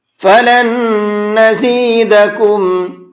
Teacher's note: نون ساکن کے بعد میں نون آتا ہے تو وہاں پر دونوں نون کو مکس کر دیتے ہیں اور پھر غنہ کر کے پڑھتے ہیں۔ اب اگر ہم ہجے کریں گے تو اس طرح سے کریں گے، اس لام کو دوسرے والے نون کے ساتھ میں ملائیں گے، پہلے والے نون کو اب نہیں پڑھیں گے کیونکہ اب یہ مکس ہو چکا ہے دوسرے والے نون کے ساتھ میں۔